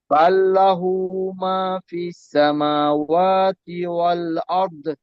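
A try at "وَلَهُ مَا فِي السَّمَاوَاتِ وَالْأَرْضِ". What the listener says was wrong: মাশাআল্লাহ মাশাআল্লাহ।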